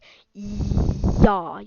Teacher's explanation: you'll feel the middle of your tongue kind of go up against the hard part in your mouth behind the alveolar ridge, like yaw, like you feel your tongue hit the top of your mouth. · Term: palatal sound